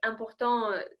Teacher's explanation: important se prononce sans T à la fin s'il s'agit du genre masculin